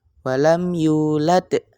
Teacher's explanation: kita baca dengan qalqalah kubra yaitu yang ada di akhir ayat.